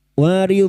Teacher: huruf dod tepi lidah nempel pada gigi gerham atas boleh kiri boleh kanan